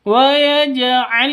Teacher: Masuklah langsung ke lam, masuklah ke lam kedua, karena inilah yang disebut idgham.